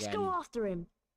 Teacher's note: dropping the h at the beginning of him, and therefore pronouncing the r at the end of after him